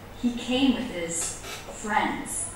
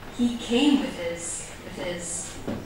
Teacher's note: Also the word his, a possessive pronoun. He came with his, just like with, very low in pitch, unstressed.